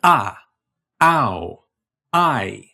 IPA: aʊ̯ aɪ̯